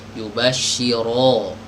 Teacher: jadi dia mendesis dan desisnya ini menyebar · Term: huruf Sin yang bertasydid